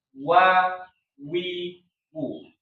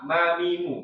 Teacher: wau itu di pertengahan bibir gitu ya jadi bukan di ujung bibir